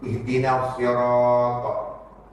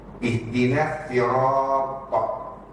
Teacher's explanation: Yang pertama tadi itu dia bawa riwayat Imam Susi an Abu Amr, dia tukar daripada sad ke sin.